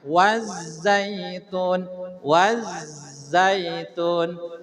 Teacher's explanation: cara ngucapin Zai ada keluaran angin pecah